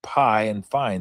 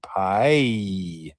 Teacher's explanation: Or as in pie and fine, starts low and moves up to an E sound. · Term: gliding vowel